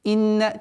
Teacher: четкое произношение огласовки кесры со звуком хамзы, а так как звук хамзы подчиняется огласовке, то есть остается у нас четкое произношение кесры.